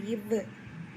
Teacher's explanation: மேல்வாய் பல்லை கீழ் உதடு பொருந்துவது பிறப்பது